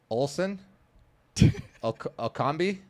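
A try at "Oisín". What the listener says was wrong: It's not Olsen, it's an I. Oisin.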